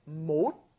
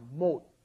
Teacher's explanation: Originally, it's 못, which is unaspirated, just a closing D sound, 못, right? But then when it comes up against an H, it becomes aspirated.